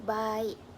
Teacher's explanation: Ia juga dilafazkan sebagai bunyi yang terpisah seperti ba dan juga e, iaitu baik. Kedua-dua vokal terpisah antara suku kata. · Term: vokal berganding